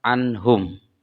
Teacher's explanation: nun mati bertemu dengan ha, seperti pada kata anhum, maka nunnya dibaca jelas